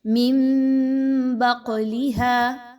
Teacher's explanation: نون کی آواز کو میم کی آواز میں بدل دینا ہے · قاف حروف قلقلہ میں سے ہے، قاف پر جزم کی علامت آ گئی، قاف کو ہلا کر پڑھا جائے گا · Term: اقلاب